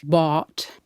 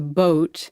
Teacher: vowels moving from a lower position to a higher position in the mouth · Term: Great Vowel Shift